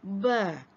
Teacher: Huruf ba keluar pada kedua-dua bibir atas dan bawah.